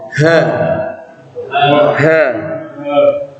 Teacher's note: nah pangkal tenggorokan kemarin kan coba apa aha ah aha Ya sifatnya Hamas ya napasnya terhembus banyak angin yang keluar